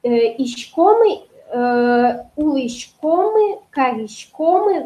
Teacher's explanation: у меня ударение падает на предпоследний слог